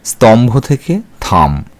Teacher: ভবন বলে যেমন স্তম্ভ থেকে থাম এখানে দন্তস লোভ পেয়েছে এবং ত এই অল্পপ্রাণ ধ্বনিটি মহাপ্রাণ ধ্বনি ভ এর প্রভাবে মহাপ্রাণিত হয়ে থ হয়ে গেছে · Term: মহাপ্রাণী ভবন